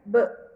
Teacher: Não, olha só, o B de boneca, ele vibra. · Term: sonoro